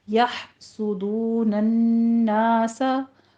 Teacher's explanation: या हा को ले जाके वस्ते हलक में स्टॉप करेंगे और हमस भी होगा इसके ऊपर। सीन के ऊपर सीटी की आवाज़ निकालते हुए ऊपर जम्मा है, होंठ गोल कर लीजिए, आगे वाव मद्दा है, होंठ गोल रखते हुए टू काउंट करना है। · अम में इजहार शफ़ी है, मीम साकिन का कायदा। या हा को ले जाके वस्ते हलक में स्टॉप करेंगे और हमस भी होगा इसके ऊपर